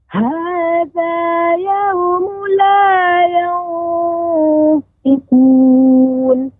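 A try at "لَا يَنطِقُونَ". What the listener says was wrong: Udah bagus, tapi to-nya nanti lebih tepat lagi pengucapan makhrajnya yantiqun.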